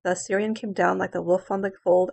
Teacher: byron first of all it's in anaphystic tetrameter that means they're in each line there are four feet with two unstressed syllables followed by one stressed syllable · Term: anapests